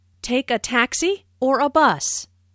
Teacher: Notice the rising intonation on taxi, the first choice, and falling intonation on bus, the second choice.